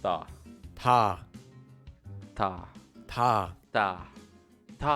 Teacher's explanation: English, but it's not a hard T sound like in the word time, and it's not a hard D sound like in the word dog. It's between T and D, and is a bit softer.